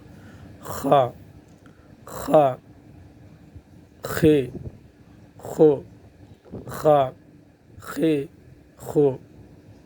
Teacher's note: یعنی گویا کہ ایک غرغرائی سی آواز اس میں آئے گی۔ خا، خے، زیادہ بھی نہیں کرنا، خا اس طرح بھی نہیں کرنا ہے، یعنی ایک درمیانہ جو ہے۔